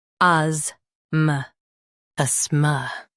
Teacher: Stress as and keep ma soft.